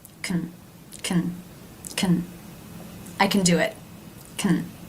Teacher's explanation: You've probably noticed that this word often reduces. The a as in bat vowel is changed to the schwa.